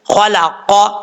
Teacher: ख जबर ख, लाम जबर ला, खला, कौफ जबर क, खलक़, कौफ भी हरूफ मुस्ताला में से है, पुर पढ़ा जाएगा, ये 2 नुक्तों वाला कौफ होता है। खलक़, इसका मखरज है जुबान की जड़ ऊपर वाले तालु के नरम हिस्से से लगे तो कौफ अदा होता है